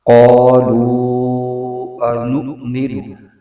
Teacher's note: حمزہ ساکنہ میں جھٹکا ہو رہا ہے